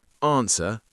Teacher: I don't pronounce the W and I don't pronounce the R in my modern RP accent. I don't normally pronounce the letter R unless it's followed by a vowel sound. So technically the letter R is silent here too.